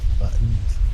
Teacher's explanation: There's no T in her buttons. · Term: glottal stop